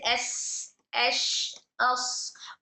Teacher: तीनों में भी वॉइस फ्लो होगा आवाज हमारी जारी होगी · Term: सिफत रखावा